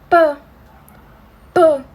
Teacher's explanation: por que que era um som oclusivo porque a gente tem a gente Segura esse ar quando a gente fala né então vai ser um som oclusivo